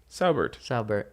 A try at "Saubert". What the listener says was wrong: You're saying sour like Lindsay. Sour. It's just 2 syllables.